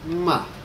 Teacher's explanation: you go from high to low almost as quickly as you can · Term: fourth and final tone